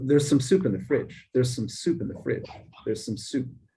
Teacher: I'm not spending any time on the word some at all. I'm just trying to get to soup. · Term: weak form